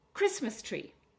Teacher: So three syllables, but this time we're going to stress on the first syllable.